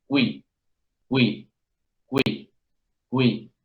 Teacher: en el francés parece que fuera más cortita y más unida inmediatamente a la y